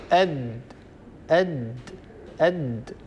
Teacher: ستلاحظون أن طرف اللسان يقرع أصول الثنايا العليا. أصول الثنايا العليا يعني المكان الذي تلتقي فيه الثنايا العليا، الأسنان العليا هذه التي تلتقي فيه هذه الأسنان العليا باللثة. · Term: الدال